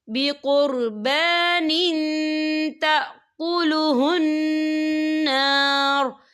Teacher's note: عہد الینا الا نؤمن لرسول حتى يأتينا بقربان تأكله النار، دیکھیں بقربان، نون کے نیچے تنوین ہے، تنوین کے بعد جو ہے تا آ رہا ہے اور تا جو ہے افا کا ورڈ ہے تو ہم یہاں افا کریں گے، تنوین کی آواز کو ناک میں چھپائیں گے۔